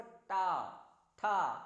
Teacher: जीभ उल्टी हो जाती है पलट के और ऊपर को जाके टच करती है